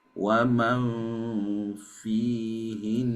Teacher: di huruf nun yang bertasydid, maka nunnya tetap dibaca dengung